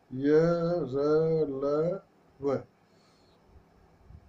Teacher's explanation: इनके उच्चारण में वायु का अवरोध बहुत कम समय के लिए होता है। जिन व्यंजनों के उच्चारण में जीभ मुख के किसी भी भाग को पूरी तरह स्पर्श नहीं करती, वे अंतस्थ व्यंजन कहलाते हैं।